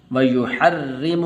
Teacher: را کو باریک کر کے پڑھنا ہے